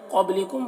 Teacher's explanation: قاف کو پر پڑھنا ہے، با میں قلقلہ کرنا ہے